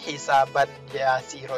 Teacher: Kita nggak terdengar non sukunnya lagi. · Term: idgham bi gunnah